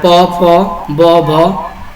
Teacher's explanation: हमारे ओठों के दोनों ओठों के स्पर्श से यह ध्वनि उत्पन्न हो रही है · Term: ओष्ठ